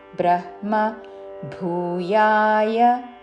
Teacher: బ్రహ్మ ముందు హా పలికి తర్వాత మా